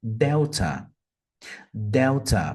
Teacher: Percebam que a primeira sílaba é a sílaba mais forte. A letra E, em plain English, seria I.